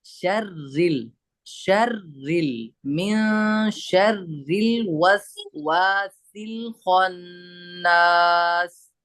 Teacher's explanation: रॉ को हम यहाँ बारीक पढ़ेंगे, रॉय मुशद्ददा पर जबर या पेश हो तो पुर पढ़ेंगे, और अगर रॉय मुशद्ददा पर जेर है तो बारीक पढ़ेंगे।